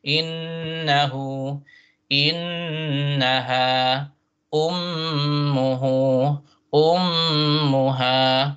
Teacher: the nun shadda and then mim shadda is special. You hold it for 2 harakat and nasal from the nose.